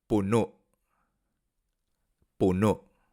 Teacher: el acento en la última sílaba parece perderse con el cierre glotal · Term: cierre glotal final